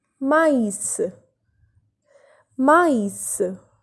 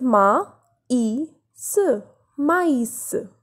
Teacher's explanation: Here we are pronouncing the vowel A and I separately. That is ma, I, s. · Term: accent tréma